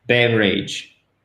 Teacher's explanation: quand vous faites l'accent tonique au bon endroit là vous mettez sur la première syllabe berridge et à travers tout ça semble beaucoup plus naturellement berridge